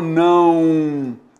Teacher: esse som decresce. Por isso, eu tenho esse O com o som do U semivogal